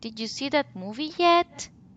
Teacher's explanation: the rising intonation is at the end of the sentence in every yes/no questions the rising intonation is at the end